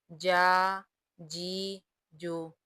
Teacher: جیم کا مخرج درمیان زبان اور درمیان کا تالو ہے، جیم زبر جا، جیم زیر جی، جیم پیش جو، جا جی جو۔